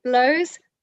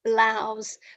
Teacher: So it's the difference in vowel, oh, ow, oh, ow.